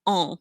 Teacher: And the vowel becomes nasal and the N or the M is not pronounced. · We say the U, but we don't really say the N. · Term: nasal sounds